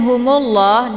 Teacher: mimnya langsung dileburkan ataupun dimasukkan ke dalam huruf la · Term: alif lam assyamsiyah